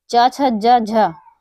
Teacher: तालु से उच्चारित होते हैं। ये मूर्धा से उच्चारित नहीं होते हैं। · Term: तालव्य